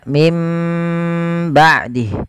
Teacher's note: Tapi kita mengambil yang idbaq, yaitu menempelkan bibir itu secara rapat.